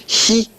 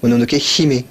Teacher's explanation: c'est un hi à la limite, pardon, entre le hi et le chi. C'est un chi très doux.